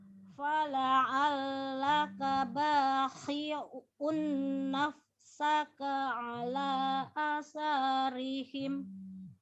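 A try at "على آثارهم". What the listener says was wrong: Alanya dibaca panjang.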